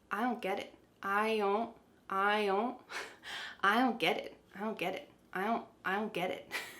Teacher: We're changing the T to a D, ged, and then it is a stopped T.